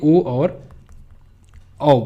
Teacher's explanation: कंठ और ओष्ठ अगर पूछा जाए तो इससे ओ और औ बोलते हैं। ओ और औ जो है ये कंठ और कंठ और ओष्ठ से है।